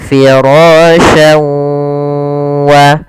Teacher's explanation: memasukkan huruf tanwin pada lafal syan ke huruf waw, kemudian digunnahkan, ditahan. Karena idgham bi gunnah artinya memasukkan disertai dengan gunnah.